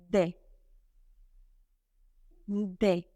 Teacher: The main articulation for the letter D sounds occur with the tongue against the ridge, the alveolar ridge.